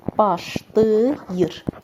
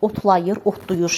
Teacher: Bax, belə bir şəkilcisi artıranda A tələffüzdə keçir qapalıya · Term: qapalıya keçəcək